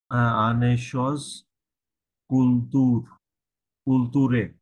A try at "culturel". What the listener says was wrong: culturel, ওখানে এল সহ হবে culturel।